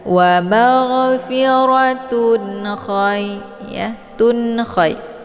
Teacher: Cara bacanya, tanwinnya dibunyikan secara jelas ya. Jadi cukup ditekan saja, tidak perlu ditahan. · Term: izhar halqi